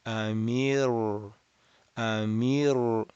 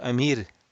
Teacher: Ra has nothing to do with the lips. It's not a lip letter, it's a tongue letter. Raising the back of the tongue. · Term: Ra mufakhama